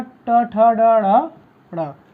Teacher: ट वर्ग और री और मूर्धन्य स और र, इन सब का उच्चारण आपके मूर्धा से होगा